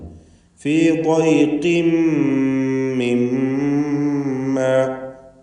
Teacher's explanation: ഖാഫും തഫ്ഖീം ചെയ്യേണ്ട അക്ഷരമാണ്, പക്ഷേ കസ്റായതുകൊണ്ട് കുറഞ്ഞ തഫ്ഖീം. അതിൻ്റെ തൻവീനിനെ ശേഷമുള്ള മീമിൽ പൂർണ്ണമായും ലയിപ്പിച്ച് മണിക്കണം.